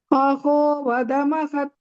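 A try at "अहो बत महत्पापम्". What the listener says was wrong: not vada. It is not vada, bata. Bakara, you're telling aho vadama. It is not vata, bata. Aho vadamahat papam.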